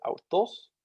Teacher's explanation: the tos is higher in pitch than the au